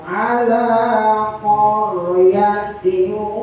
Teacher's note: idgham kan dengung, diguna artinya lantunan. Maka dengung yang dilantunkan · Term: idgham diguna